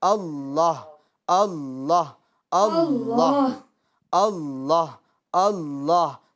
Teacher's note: تو ہا جو آخر میں ساکن ہو رہی اس کی آواز بھی آنی چاہیے